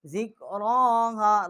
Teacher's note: کو ایک الف جتنا اس کی آواز بلند کی ہے، اور ہا جو ہے یہ بھی اقصائے حلق سے اس کا مخرج ہے، اس کو بھی ہم نے ایک الف جتنا یہاں آواز کھینچی ہے ۔ إِلَىٰ رَبِّكَ مُنْتَهَاهَا، اور یہاں ہم نے را کو با